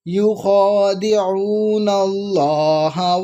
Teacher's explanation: اللہ ہم بسم اللہ پڑھتے ہیں لام کو باریک، لیکن یہاں پر پر کر کے پڑھ رہے ہیں کیونکہ اس سے پہلے زبر ہے